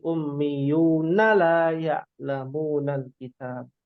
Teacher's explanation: di sini amaniya ya-nya pendek, ummiyuna na-nya juga pendek.